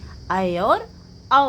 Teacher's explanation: जिसके उच्चारण में आधा मुंह खुलेगा वो क्या है? अर्धवृत्त है।